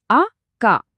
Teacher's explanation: మధ్యలో మనం తీసుకున్న ఆ చిన్న పాజ్, ఆ తర్వాత గొంతులో కలిగిన స్ట్రెస్, ఆ డబుల్ కా సౌండ్ కోసం మన వోకల్ ప్రెషర్ ఖచ్చితంగా పెరిగింది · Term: సజాతీయ ఒత్తు